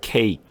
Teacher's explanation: 그러니까 cake 아주 간단하게 이 손바닥을 놓고 했을 때 바람 소리가 나오지 않게 cake 이렇게 소리를 내요. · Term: voice K 소리